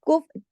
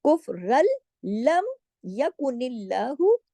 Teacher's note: सुम मजदादू कुफरल, अब जो रा दो जबर रन है ना, ये आगे लाम में जुड़ रहा है क्योंकि लाम पे तशदीद है, को इसको रन नहीं पढ़ेंगे, लम, कुफरल, ऐसे हो जाएगा ये। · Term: इदगाम